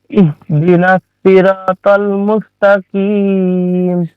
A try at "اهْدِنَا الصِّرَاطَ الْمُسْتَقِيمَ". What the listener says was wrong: সদ হচ্ছে হুরুফে মুস্তাআলিয়া, র এর উপরে জাবার থাকার কারণে র পুরো হবে, ত হুরুফে মুস্তাআলিয়া, আর কফ হুরুফে মুস্তাআলিয়া, আর শেষে মাদ্দে আরিজ ওয়াকফি। ইহদিনাস সিরাতাল, তাল হবে না।